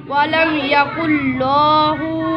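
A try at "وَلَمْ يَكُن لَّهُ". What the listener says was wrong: لام کو لمبا نہیں کریں گے. ولم یکن لہ.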